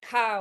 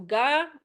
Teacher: We have dakuten which adds voicing, so basically the syllable ka we can change into ga, or syllable sa we can change into za